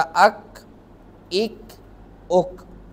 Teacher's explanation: और इसका मखरज ये है कि जब ज़ुबान की जड़ थोड़ा सा नरम तालू से मुँह की जानिब लगे तो उस वक़्त ये काफ अदा होता है। जिस तरह अक, इक, उक। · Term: डंडी वाला काफ